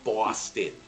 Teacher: the second o is more like a schwa sound